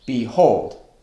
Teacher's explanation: Iambic, unstressed, stressed. The word behold. Behold, unstressed, stressed.